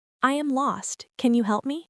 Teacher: In help me, the P is a stop P. You don't let the air pop out.